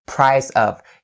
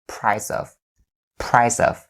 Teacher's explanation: You link or you take the sound at the end of the word price over to of. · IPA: / praɪ-səv /